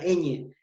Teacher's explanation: es sonora porque el sonido va a aparecer por donde por mis fosas nasales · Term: la enee